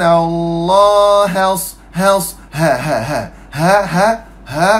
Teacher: Makhraj huruf ha ni kerengkung.